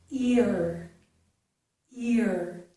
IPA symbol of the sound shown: ɪɹ